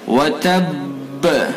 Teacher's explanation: یہ با کو جب ہم ساکن کریں گے، یعنی اس کے اوپر وقف کر دیں گے، تو پھر اس کے اندر ہم قلقلہ کریں گے۔ وتب، اگر ساکن نہیں کریں گے یعنی وقف نہیں کریں گے تو پھر قلقلہ نہیں ہوگا، تو وقف کرنے کی صورت میں اس کے اندر قلقلہ کیا جائے گا۔